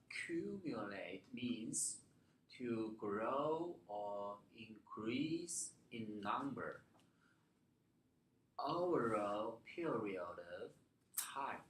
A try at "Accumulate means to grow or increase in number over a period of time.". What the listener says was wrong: Don't stress this word. Stress period of time. Yes, this one, not so stressed. Not over, but over a period of time.